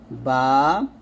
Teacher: দুই ঠুটের ভিজা জায়গা হতে একটি হরফ উচ্চারিত হয় · 2 ঠোঁটের ভিজা জায়গা হতে একটি হরফ উচ্চারিত হয়, বা। আর 2 ঠোঁটের শুকনো জায়গা হতে একটি হরফ উচ্চারিত হয়, মিম।